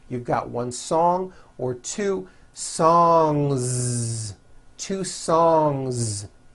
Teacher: song ends with a voiced n g sound so if you make it plural don't forget to add a voiced Z ending